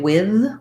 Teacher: some people say with with a voice th